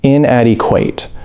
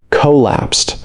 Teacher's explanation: stress on the second syllable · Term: word stress